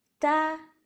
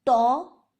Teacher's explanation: اسی طرح ہم اور بھی حروف میں محسوس کر سکتے ہیں، مثلا تو یہ موٹا حرف ہے، اس کے برعکس تا یہ باریک حرف ہے، تا کی آواز باہر آ رہی اور تو اس کی آواز اوپر تالو کی طرف بلند ہو رہی ہے